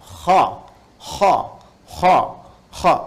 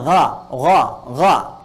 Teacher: itu bagian pangkal lidah di paling ujung itu menyentuh ke langit-langit. Sehingga ketika dia ke atas, suaranya lebih tebal. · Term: isti'la